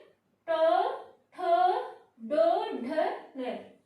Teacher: आपका जो तालवे होता है ना उससे पीछे की जो है हमारी टंग जो है उससे थोड़ा पीछे मूवमेंट करेगी। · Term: मूर्धन्य